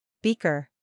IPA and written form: ˈbiː.kər (Beaker)